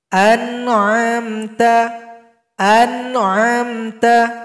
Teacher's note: Nah kenapa namanya ghunna naqisah karena dia tetap masuk kepada pangkal hidung tempat keluarnya huruf nun